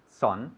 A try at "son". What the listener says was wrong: Son, no. Okay, escribe S-O-N, but it's pronounced san. San, como el sol, san. Y bajando la mandíbula más, san.